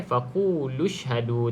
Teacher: Terus kita baca dengan shin mati. Tak perlu kita bunyikan hamzah wasal ni.